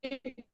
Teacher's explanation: kemudian di wakafnya disukunkan jadi harus terdengar huruf rnya